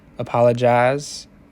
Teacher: we hear the fronting of the eye diphthong of General American to ah · the fronting of the I diphthong of General American to ah. So you hear something like apologize, and then something like the kit vowel is palatalized and diphthongized to ia.